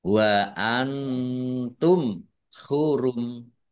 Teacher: Nun sukun bertemu dengan huruf ta bacaan ikhfa dibaca samar-samar. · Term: izhar syafawi